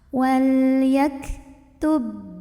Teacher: ba-nya ini masuk ke ba kedua, jadi nggak usah mantulin dulu, masuk secara sempurna, kamil. Wal yaktubai, langsung ya, tutup suaranya. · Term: idgham mutamathilain